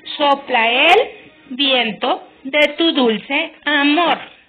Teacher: seguida de otra palabra que inicia también con vocal o h se unen estas sílabas en un solo sonido y se cuenta una sílaba en vez de dos